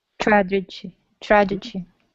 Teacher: the TR is more of a CHR sound